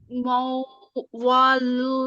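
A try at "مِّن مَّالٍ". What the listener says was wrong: मौ नहीं होता ये, मीम के ऊपर जेर है, इतना पढ़ना है।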